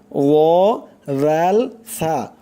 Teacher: জিহ্বার আগা সামনের উপরের 2 দাঁতের আগার সঙ্গে লাগাইয়া 3টি অক্ষর উচ্চারণ হয় ও রাল সা, উচ্চারণ করতে হবে নরম করে। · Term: 13 নম্বর মাখরাজ